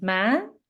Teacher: The high-rising tone, ma, means mother in the Southern Vietnamese dialect